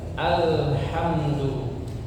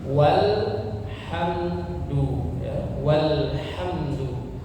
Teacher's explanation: alhamdu ya di situ di awal apa dibaca hamzahnya dibaca a ya al jadinya dibaca alhamdu kemudian yang di sebelahnya walhamdu ada tulisan apa alif dianggap tidak ada ya artinya apa tidak dibaca langsung disambung langsung dibaca dengan lamnya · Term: hamzah wasal